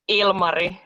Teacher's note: The stress is in the first syllable.